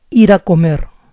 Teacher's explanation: When speaking fast, if you see a word ending in a vowel plus R and the next word starts with a vowel, it's common to pronounce this final R as a soft R, because our minds tend to think that this R is in the middle of two vowels, even if they belong to different words.